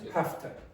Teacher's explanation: So it's sort of like have, and then this upside down E, schwa.